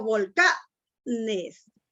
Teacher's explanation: Entonces, ese volcanes es una palabra grave. Tiene la mayor fuerza de voz en la segunda o en la penúltima sílaba.